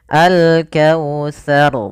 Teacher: Nah, pada lafal sar di sini yaitu kita baca rnya dengan bacaan tebal yang mana tsanya tidak boleh ikut tebal. Maka alkautsar tidak boleh dibaca alkautsar.